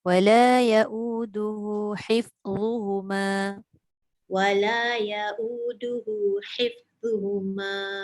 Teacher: Zu hujung lidah keluarkan.